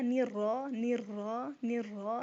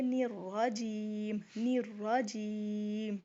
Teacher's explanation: جیم ناک میں آواز نہیں جائے گی